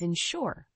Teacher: the word insure has two syllables with the stress on the second syllable